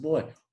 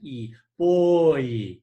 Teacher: you begin with o and then you move to more of an e sound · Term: diphthong